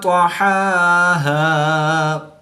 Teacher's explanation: طا بھی حروف مستعلیہ میں سے ہے تو اس کو پر یعنی موٹا پڑھیں گے۔